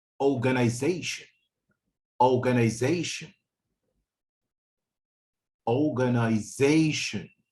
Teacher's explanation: the fourth syllable is stressed. Okay, so you would find that it's louder and clearer than the rest of the syllables.